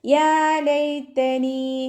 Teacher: യാ കൽക്കലയുടെ letter ഇല്ലാത്തത് കൊണ്ട് half സുക്കൂന് കൊടുത്തിട്ട് ഉച്ചരിക്കുക. നൂനിൻ്റെ കൂടെ യാ മദ് വന്നു 2 കൗണ്ട് നീട്ടിക്കൊടുക്കുക.